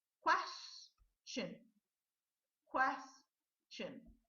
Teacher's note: The last syllable here is special. It's pronounced as chin, chin, and not shun, like the other words we're considering. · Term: CH sound